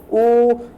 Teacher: आपके हल्के से ओठ आगे को आ रहे होंगे और आपका जो कंठ होगा ना वो हल्का सा क्या हो रहा है, नीचे को दब रहा होगा। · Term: कंठोष्ठ